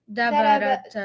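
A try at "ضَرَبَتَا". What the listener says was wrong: No, it's not dabara. I don't know who Deborah is, but this is daraba.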